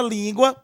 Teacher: em que a penúltima sílaba, ela é a mais forte, sendo a tônica, portanto, tá bom?